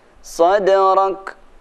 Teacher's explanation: Cara membaca kaf mati dan tak mati ada sedikit desisnya.